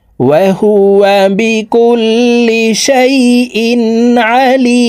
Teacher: লি এখানে 3 আলিফ টেনে মিমকে সাকিন করতে হবে কারণ মদের হরফের বামের হরফে ওয়াকফ হইলে মদ্দে আরজি 3 আলিফ